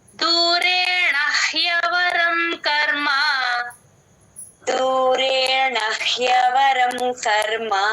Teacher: బయటికి వదిలితేనే హ కరెక్ట్ గా వినిపిస్తుంది